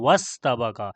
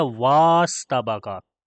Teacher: यहाँ पर भी जब हम वाव को सीन के साथ मिलाते हैं तो वाव को डायरेक्ट सीन के साथ पढ़ते हैं वस्तबक़ा। हालांकि यहाँ पर भी वाव को लंबा करके पढ़ना चाहिए था वास्तबक़ा।